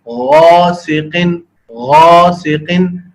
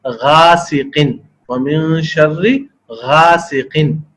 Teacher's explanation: غاسقن، غاسقن، اگر اس کو کوئی پڑھے غاسقن، وَمِن شَرِّ غاسقن، غین کو بغیر موٹا کیے پڑھے تو یہ لہن خفی کی غلطی بن جائے گی